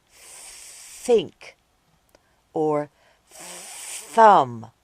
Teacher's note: this sound is called the unvoiced th sound